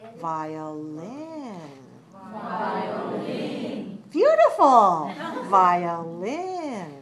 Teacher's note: violin three syllables stress the third